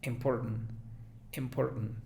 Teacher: Es una I sutil, una I como con boca de E, pero no llega tanto a ser E